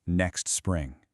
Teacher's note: You've got the kst from next crashing right into the spr from spring, and that gives you an incredible ksts spra chain.